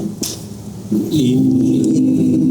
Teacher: Nah, sempurna masuk hidung. Tidak ada suara dari mulut. Murni dari hidung. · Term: gunnah paling sempurna